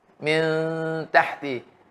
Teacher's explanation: Tanwin pun disembunyi. Serta mengekalkan sifat dengungnya dengan sempurna 2 harakat dengan cara bacaan hujung lidah diangkat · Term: ikhfa